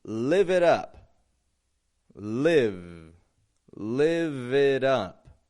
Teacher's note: when we voice that V, live it, it helps us link the words together. If we only get lift it up or live it up with a v, we're going to get a bit of a choppy sound.